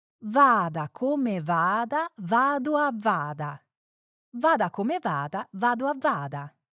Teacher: the Italian V sound, which is made by pressing your upper teeth lightly against your bottom lip